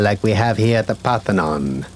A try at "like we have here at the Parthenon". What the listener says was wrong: Hit that again, but with less emphasis on Parthenon. It sounds like you're lying.